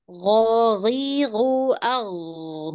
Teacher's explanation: Huruf ghain memang harus mengalir. Dia rokhawah.